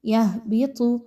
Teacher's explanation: یہبط، ہا کے مخرج کو بہت اچھے سے کلیئر پڑھیے بھاری کر کے. طا بہت کلیئر پڑھی جائے گی، موٹی کر کے پڑھی جائے گی، موٹا حرف ہے